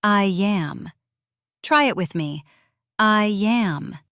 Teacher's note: Between I and am, there's a little Y sound. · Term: linking